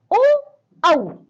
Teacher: इनका उच्चारण स्थान है कंठोष्ठ, यानी कि कंठ और ओष्ठ, इसीलिए हम इन्हें कहते हैं कंठोष्ठय।